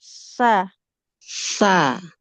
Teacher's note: Nah, jangan sa, itu nanti jadi sin. Ujung lidahnya tempelkan ke ujung gigi seri atas. Sa, keluar sedikit dia lidahnya. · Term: huruf sa-nya